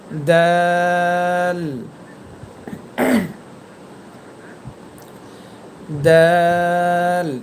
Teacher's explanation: সামনের ওপরে দুই দাতের গোড়ার সাথে সাথে আপনার জিহবার আগা একসাথে সংযুক্ত করে দাল হরফটি উচ্চারণ করবেন